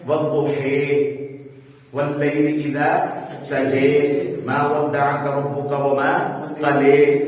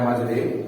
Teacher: زیر کی طرف مائل کر کے یا کی طرف مائل کر کے پڑھتے ہیں۔ جیسے موسیٰ کو موسی، ٹھیک ہے، والضحیٰ والضحیٰ واللیل اذا سجا۔ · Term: امالہ